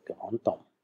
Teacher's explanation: obwohl zugrunde ein D liegt, plötzlich in der Liaison ein T